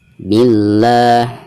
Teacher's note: Lam jalalah di sini dihukumi lam jalalah tarkik atau lam jalalah yang dibaca tipis. Kenapa? Karena sebelum lam jalalah tersebut itu ada harakat kasroh, yaitu bi ya.